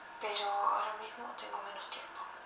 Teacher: It sounds like the Spain accent doesn't emphasize the S as much. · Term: Spanish accent